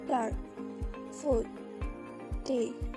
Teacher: The d sound is voiced. The vocal cords vibrate while producing it